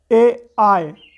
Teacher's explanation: अभी हम बात करते हैं कंठ तालव्य की, तो आप बोलेंगे ए आय, तो आप देख सकते हैं कि ए आय जो है यह कंठ से बोला जा रहा है, कंठ तालव्य से बोला जा रहा है · आ और ई, ये दोनों मिलकर ए का निर्माण करते हैं, ए। तो आप देख सकते हैं आ को जो है कंठ से बोलते हैं और ई को जो है उसको हम दोस्तों तालव्य से बोलते हैं, ई।